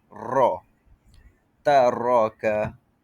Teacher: takrir, getaran hujung lidah pada ra